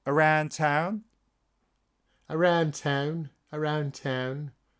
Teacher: I've got it more as a almost flat a, and then slightly tailing off into a schwa